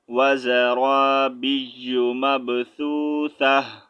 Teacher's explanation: Stop کی صورت میں آپ نے تا کا ساؤنڈ ہاں میں چینج کرنا ہے۔ اگر آپ ملا کر پڑھنا چاہیں گے تو تا کے اوپر جو بھی سائن ہوگا آپ نے وہ پڑھنا ہے، ٹھیک ہے۔